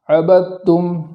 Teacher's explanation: وقف کی حالت میں میم کو گنہ کے ساتھ، یعنی جو اس کا ذاتی گنہ ہے اس کے ساتھ پڑھیں گے